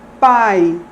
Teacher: Enquanto que o I é o glide, considerado o segmento assilábico. Então, em pai, A e I estão juntos na mesma sílaba, sendo que um é o núcleo da sílaba e o outro, o I, que é a semivogal, ou glide, é o segmento assilábico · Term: ditongo